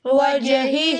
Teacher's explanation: ایک ہا جو ہے وہ جلدی پڑھیں گے اور ایک ہا کو ہم لمبا کریں گے